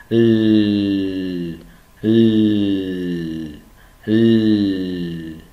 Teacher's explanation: lưỡi đưa lên chặn và đụng vào cái chân răng của hàm răng trên